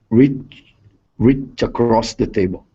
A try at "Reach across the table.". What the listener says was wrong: Pronounce that T. To cross. To cross. Reach to cross. Reach to cross the table.